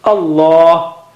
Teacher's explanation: So Allah, the lam of Allah, the word Allah is thickest.